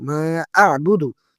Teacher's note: মিম আলিফ জবর মা, ৩ আলিফ টানতে হবে, মদ্দে মুনফাসিল।